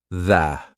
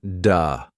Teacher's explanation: Your tongue has to come through your teeth. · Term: the th sound